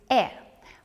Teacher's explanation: When I make this sound, my lips are spread, and my tongue is half raised in my mouth. My jaw is slightly open.